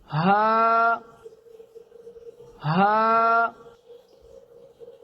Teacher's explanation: सीने के करीब हल्क के शुरू यानी निचले हिस्से से अदा होता है। · याद रखें, ये हिंदी वाले हा की तरह है। बगैर किसी दबाव के, बगैर किसी ज़ोर के, बगैर किसी एफर्ट के हल्क के निचले हिस्से से अदा होता है, सांस के ज़ोर के साथ।